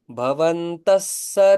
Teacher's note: विसर्गाच्या पुढे जर स आला तर विसर्गाचा स होतो